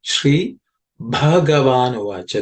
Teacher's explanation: This Bha has to be emphasized with extra breath. Okay. As aspirated. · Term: Mahaprana